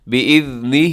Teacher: لیکن وقف کریں گے تو آخر میں ہا کو ساکن کر دیں گے